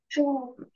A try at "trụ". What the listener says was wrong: Thanh mô 4 nhá. Trụ thì thành thanh 1 đúng không?